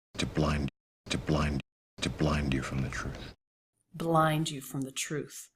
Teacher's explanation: Blind and truth. A little bit longer there. A little more stressed.